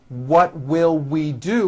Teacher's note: It's never a V sound, where you are like biting down on your lower lip.